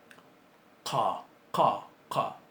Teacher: la pronunciación de esta es más atrás en la garganta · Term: qaf